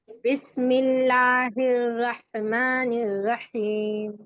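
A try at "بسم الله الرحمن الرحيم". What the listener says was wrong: नहीं, रोह, अगर हम रह कर देंगे ना तो ये मजहूल हो जाएगा। रोहमानी, नहीं झटका नहीं, रोह, रोह।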